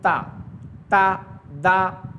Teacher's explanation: हैं जो सामने वाले दांत हैं त द ता ता यानी जुबान की नोक आगे वाले दांत में लगाएंगे ता ता दा त त थोड़ा सा होठ मोटा करेंगे तो